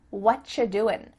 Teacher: you doing we could reduce this to say what you're doing it sounds like a CH sound here and actually we've cut out completely the word are